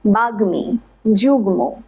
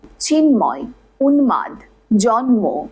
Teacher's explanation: 7টি ব্যঞ্জনবর্ণ রয়েছে যাদের সাথে ম ফলা যুক্ত হলে দ্বিত্ব উচ্চারিত হয় না, ময়ের যে আসল উচ্চারণ তা অবিকৃত থাকে